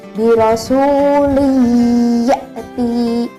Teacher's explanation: Nah, di sini tanwin juga ketika bertemu dengan huruf ya harus dimasukkan ke dalam huruf ya. Maka huruf ya ini seperti ditasydidkan. Ditekan selama 2 harokat. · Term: idgham bil ghunnah